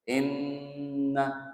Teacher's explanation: itu dengung, gunah. Karena nun ditasdidkan.